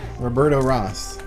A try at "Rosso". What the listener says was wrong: Rosso. You gotta add the O at the end. Because it's more Mexican like that.